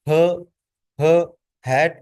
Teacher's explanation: इसके बाद ग्लोटल इस ये जो साउंड है ग्लोटल ये थ्रोट से पैदा होती है हलक से निकलती है